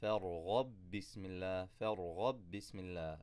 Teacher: This is al-mutamathilan, same letter, so we do idgham, and again shadda on the second letter.